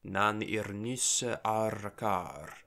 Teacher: that coda S would just meld into a geminate R. So we get nan irnisse arkar.